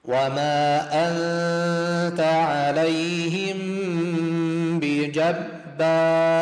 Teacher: ميم ساكن بعد باء إخفاء شفا يمد حركتين · نون بعد تاء إخفاء يمد حركتين